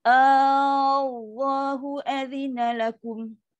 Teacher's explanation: Allah ni lafaz jalalah, dia akan jadi tafkim, dia akan jadi tebal. Tapi hamzah ni tetap dia istifal, rendah.